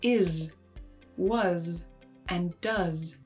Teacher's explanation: many words that end in an S spelling are pronounced with the voiced z.